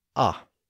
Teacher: many speakers were no longer rounding their lips when they made that short O sound. And that meant that when they pronounced the short O sound, instead of saying aw, they said ah.